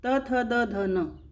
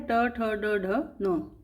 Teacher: जो त वर्ग होता है क्या होता है, दंत्य होता है, और ट वर्ग होता है वो मूर्धन्य होता है। इस प्रकार से सारी जो दंत्य ध्वनियाँ थी वो मूर्धन्य ध्वनियों में चेंज हो गई।